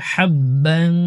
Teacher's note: বার উপর তানবিনের পরে ইখফার হরফ ফা গুন্না হবে